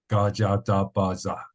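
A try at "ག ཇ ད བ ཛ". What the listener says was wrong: This one a little bit longer and more like a ga cha. It's almost like you're tired. Like ga cha ta ba za.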